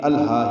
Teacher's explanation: ہا کو 2 حرکات لمبا کرنا ہے، اس کے بعد ایک یا کا نشان بنا ہوا ہے، یہ کھڑا زبر کے ساتھ یا آتی ہے۔